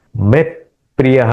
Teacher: मैं ओठ को बंद करना है। मैं थोड़ा प का उच्चारण उसमें आना चाहिए, क्योंकि यहाँ प है